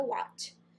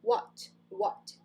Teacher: Não é um A aberto. É what. What. Ele é mais fechado, mais curto.